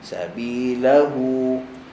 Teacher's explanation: kita kata ha paling lemah kalau dia duduk kat hujung perkataan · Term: huruf ha